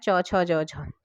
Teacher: स्पर्श संघर्षी जो स्पर्शी भी है और संघर्षी भी है तो वो आपका पूरा च वर्ग आता है